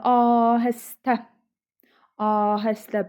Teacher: A uzanır, vurğu da sona düşür.